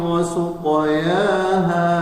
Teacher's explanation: qalqalah sughra, tapi karena dia huruf tafkhim, qafnya isti'la tebal maka ditebalkan.